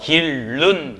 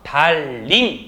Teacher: 바로 니은이 리을로 변하는 현상이 된다라고 하는 겁니다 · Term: 유음화